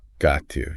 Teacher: It all blends together. So want to becomes wanna. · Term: linking